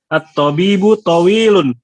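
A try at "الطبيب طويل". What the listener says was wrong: Jamil. Hadhihi jumlah mufidah.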